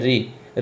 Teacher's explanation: ऋ का उच्चारण स्थान होता है मूर्धा से